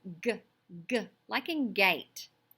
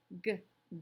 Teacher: It's a voiced sound and it's made at the back of my throat. I call it a back kicker. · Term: g sound